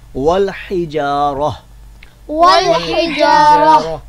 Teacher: یہاں پہ آگے وقف جائز کی علامت وقف ہے, اس کی وجہ سے ہم نے والحجارہ پڑھا ہے, یعنی آخر میں جو ہے وہ ہم نے تا کو ہا میں بدل دیا ہے اور اس کی جو پیش ہے اس کو ہم نے جزم سے بدل دیا ہے